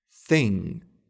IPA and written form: θɪŋ (thing)